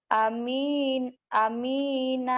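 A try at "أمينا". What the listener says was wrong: A-nya panjang. Amina.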